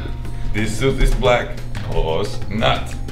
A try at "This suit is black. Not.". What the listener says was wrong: No, you don't say pause. This suit is black. That's a pause. Not.